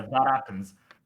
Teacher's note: I insert an intrusive vowel between that and happens. So it almost sounds like I'm actually flapping the T.